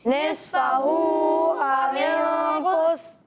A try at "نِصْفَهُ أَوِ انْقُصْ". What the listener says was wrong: پہلے صاد ہے پھر فا ہے, ٹھیک ہے. نفسہ نہیں ہے, نصفہ او انقص. اچھا بعض بچے نفسہ پڑھ رہے ہیں, ٹھیک ہے نا.